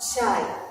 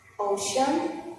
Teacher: The R string is continuous without interruptions. The vocal cords are not vibrating. According to the place of articulation is palatal. According to the manner of articulation is fricative. According to voicing is voiceless.